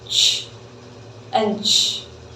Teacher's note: it's released through a small constricted opening so there's a difference here it's not a full open release it's just a small opening and again we can hear the air friction and so we